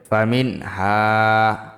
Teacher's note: খাস লাহুম ফাজবর মিম নুন জের মিন মিন গুন্ হবে না নুন সাকিনের বামে হা ইজহারের হরফ গুন্না ছাড়া স্পষ্ট হবে